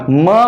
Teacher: दोन्ही ओठे एकमेकाला टेकतात, याला म्हणतात ओष्ठल. म्हणजे हा ध्वनी जी आहे निघण्यासाठी ओठ ओठाला याला बाय लेबियल इंग्लिशमध्ये म्हणतो.